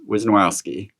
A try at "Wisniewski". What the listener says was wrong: Where's the O at? Try that again, because you didn't let me say that. It's not. You said Wisniewski. There's no O there.